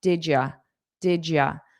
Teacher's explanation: you absolutely can take you and make it more unstressed into ya